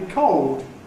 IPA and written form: kɒʊod (cold)